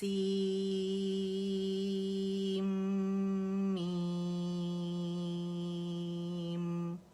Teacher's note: اور میم کی آواز تھوڑی سی چلے گی. آپ لوگوں سے میں تھوڑی زیادہ چلواتی ہوں کیونکہ بہت سارے لوگ میم کے مخرج پہ نہیں ٹکتے.